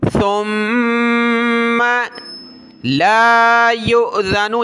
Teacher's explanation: سا پر زبان نکالیں گے اور میم پر ہم نے غنہ کرنا ہے